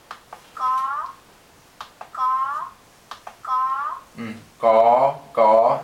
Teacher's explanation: You notice all the consonants also carry an innate long tone sound. So ga, you want to make sure that tone stays flat and long